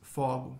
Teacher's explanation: the Spanish word fuego for fire is pronounced with an open O in Portuguese